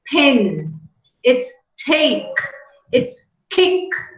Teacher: Yesterday, when we learned about allophones, we talked about p, t, k, the voiceless plosives which are aspirated when they occur initially in a word. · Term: aspirated plosives